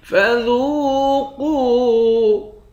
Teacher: دونوں کو ایک ایک الف کے مقدار کھینچ کر پڑھیں گے، دونوں واو مدہ ہے